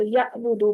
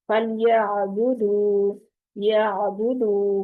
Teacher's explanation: آئین وسط حلق کا حرف ہے، اس لیے اس کو گلے کے درمیان ہی سے ادا کریں گی تو پھر جھٹکا نہیں آئے گا